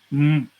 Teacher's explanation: vamos a nosotros cerrar el paso de la corriente de aire con labio inferior y labio superior. Por eso el sonido resultante es M, ¿no es cierto? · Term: bilavial nasal sonoro